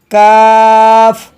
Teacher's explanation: ज़बान की जड़ और तालों के सख्त हिस्से से अदा होता है